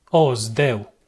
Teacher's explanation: I pronounce the zeta as the zd cluster